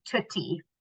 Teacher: So instead of your K, you might produce a T sound instead.